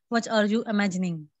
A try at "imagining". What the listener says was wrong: Dear, it's not ing, it's a n. G ko hum pronounce nahi karte. It's a silent, okay? Talking, okay, imagining, it sounds like that. Otherwise, there was quite perfect.